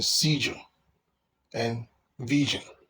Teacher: J is a voice consonant, and it is found in seizure and vision.